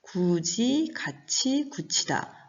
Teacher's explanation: 이 지읒과 치읓으로 바뀌어서 나는 소리, 바로 구개음화입니다. 자세한 내용을 보면 디귿과 티읕이라는 그 잇몸 소리가 형식 형태소 이모음을 만났을 때 지읒과 치읓이라는 구개음으로 바뀌는 현상이 바로 구개음화입니다.